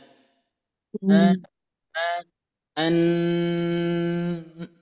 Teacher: bunyi mim dan Nun itu harus Memang benar-benar masuk ke hidung ya